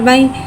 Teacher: यालिन को बगैर खींचे बगैर झटका दे नरमी से मारूफ पढ़ेंगे